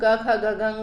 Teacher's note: जैसे हम क ख ग घ ङ बोलते हैं तो हमारी जीभ कंठ को स्पर्श करती है